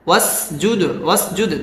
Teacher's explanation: দালটা কলকলার হরফ, কলকলা করে পড়তে হবে